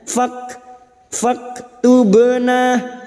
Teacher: Fak masuk pada huruf kaf yang memiliki sifat syiddah dan hams, bunyinya fak tubna.